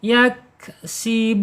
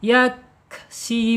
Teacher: keluarkan napasnya saja tapi jangan dipantulkan karena kap ini bukan huruf kolkola. Yak sibun ya, mad arid lis sukun. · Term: al hamsu